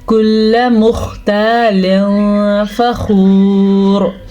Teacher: لا يحب كل مختال فخور، خوا کو پر پڑھنا ہے اس لیے کہ خوا ہمیشہ پر پڑھا جاتا ہے، یہ نہیں پر پڑھا جاتا، یہ باریک ہی پڑھا جاتا ہے۔ جو نقطے والا خوا ہوتا ہے یہ موٹا پڑھا جاتا ہے